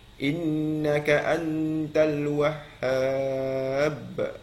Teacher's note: Wahhab tu di hujung tu ada qalqalah kubra kat situ